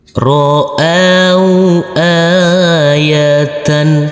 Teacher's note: Huruf alif yang berfathah a bertemu dengan wau sukun, kita lembutkan · Huruf alif kita baca panjang dengan panjang dua harakat karena di atasnya ada huruf alif kecil yang berdiri tegak lurus. Huruf ta, ta marbutah yang berfathah tanwin, kita kasih akhiran huruf N.